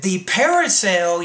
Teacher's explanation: you're not having trouble with the R there when it's surrounded by two vowels